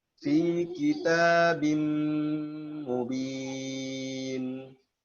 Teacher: Nah, binnya nggak ada lagi ya. Tanwinnya langsung dilebur secara kamil. Diidghamkan secara kamil ke mim. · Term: idgham kamil bi gunnah